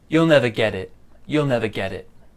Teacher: There's a link between the T and the I there, and for me, I pronounce this as like a D sound.